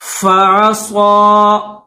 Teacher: فعصا، فا کے اوپر زبر ہے، درمیان میں یہ عین ہے، عین کے اوپر بھی زبر ہے، اور صاد کے اوپر کھڑا زبر ہے، تو اس کو تھوڑا سا کھینچیں گے، بس ایک الف کی لمٹ میں